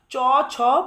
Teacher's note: চ বর্গের ব্যঞ্জনগুলো হচ্ছে তালব্য ব্যঞ্জন অর্থাৎ তালুতে উচ্চারিত হয়